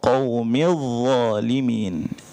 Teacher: So bila dha ni kadang kita baca zalimin. Dia bukan za, dia dha. Okey, dia keluar lidah sama macam tha dengan dha.